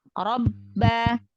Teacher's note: Ba yang pertama sukun, ba yang kedua berharokat. Jadi ditahan di sukunnya. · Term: syiddah